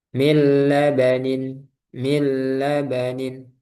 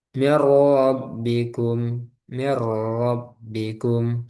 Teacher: Kemudian tidak dengan gunah, idgham bila gunah, tidak dengan gunah, yaitu ada dua, lam dan ro. Lam dan ro. Jadi langsung masuk ke lam atau masuk ke ro.